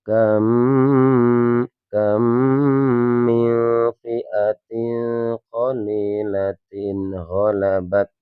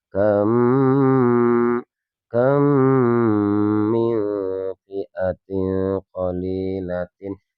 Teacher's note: Dua mim huruf mim yang sama atau dinamakan kita idhum mimi atau idhum mutamadilain teman-teman ya. Jadi cara membacanya suara mim sukunya dimasukkan kepada mim yang ada di hadapannya dan disertai dengan bacaan guna.